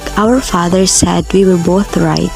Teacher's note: its pitch go down a bit at the end, a falling intonation to be exact, meaning to say it indicates a statement.